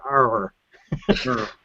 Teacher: the r is kind of like you curl your tongue back